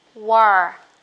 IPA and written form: wɔ: (war)